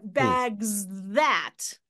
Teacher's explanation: That Z sound, that voicing of the Z, kind of might be buried in that consonant cluster.